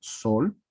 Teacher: tenemos este sonido que es la S, que es un sonido fricativo, tenemos un sonido vocálico y otro sonido lateral